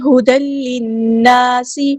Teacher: دال پہ دیکھیے تنوین آئی ہے، تنوین کے بعد دیکھیں یہ لام ہے، ہدل، تو ادغام بلا غنہ ہو رہا ہے، ہم یہاں پہ ادغام کرتے ہوئے ٹائم نہیں دیں گے، تنوین کی آواز کو لام میں مرج کر دیں گے۔ ہدل للناس، نون پہ غنہ زمانی ہو رہا ہے، 2 کاؤنٹس رکیں گے۔ الف مد آیا ہے تو 2 کاؤنٹس ہم یہاں پہ لمبا کریں گے، سین کی سٹی ہم واضح کریں گے۔